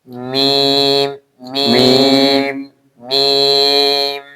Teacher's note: ঠোঁট মিলিয়ে ঠোঁটের শুকনা জায়গা